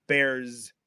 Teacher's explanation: they'll pronounce that S at the end of bears as a z sound